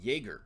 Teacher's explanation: the German letter J makes a y sound, like in Jaeger